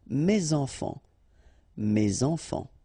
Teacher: So it goes like that, and then ending with s. Enfant, children is starting with a vowel, so you should make the liaison